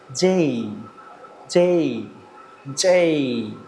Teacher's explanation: যে থেকে একটা স্লাইডিং ডাউন